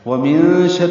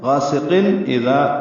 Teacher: ومن شر اخفا ہے، غاسقین اذا یہ اظہار ہے